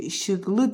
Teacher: İşıqlı da vurğu düşür son hecaya, yəni 3-cü hecaya.